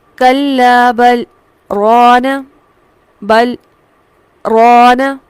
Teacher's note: یہاں پر سکتہ کیا جائے گا، آواز کو توڑ کر لمحے بھر کے لیے، لیکن سانس کو نہیں توڑیں گے اور پھر اگلا لفظ پڑھیں گے